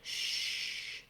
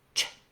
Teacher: starts with my tongue in the T position, and it drops down for my tongue in the SH position. But I don't hold the SH. It's not like shh, it's ch. · I make the sound of CH by dropping from the T into the SH position with a forceful burst of air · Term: CH sound, ch sound